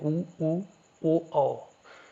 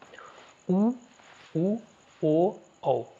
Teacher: उच्चारण करते समय हमारे होठों का आकार जो है गोलाकार बनता है वृत्त की तरह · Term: वृत्त मुखी, वृत्तमुखी